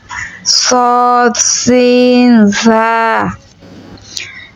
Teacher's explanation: জিহ্বার আগা সামনের নিচে ২ দাঁতের পেট ও আগার সঙ্গে লাগাইয়া সদ সিন জা